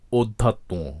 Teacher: অধ্যাত্ম এখানে অধ্যাত্মর সর্বশেষ যে তকারটি রয়েছে সেখানে চন্দ্রবিন্দু রয়েছে এবং উচ্চারণটি একটু নাসিক্য হয়েছে কারণ ত এর সাথে যে ম ফলাটি যুক্ত রয়েছে সেই মটি নাসিক্য ধ্বনি